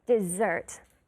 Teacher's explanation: The two S's sound like a Z.